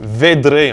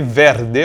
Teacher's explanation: Et -rd- /ɾd/ devient -dr- /dɾ/ en milieu de mot. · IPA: /ˈved.ɾe/